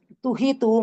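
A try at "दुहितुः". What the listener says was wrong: துஹிதுஹு அல்ல, pronounce the visargam also.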